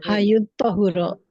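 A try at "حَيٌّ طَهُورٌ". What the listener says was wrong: Betul.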